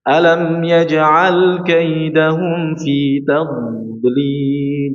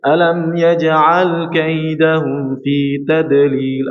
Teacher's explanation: Ketika dia tasydid atau sukun, maka huruf dhad suaranya memanjang, mengalir, memanjang. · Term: istitalah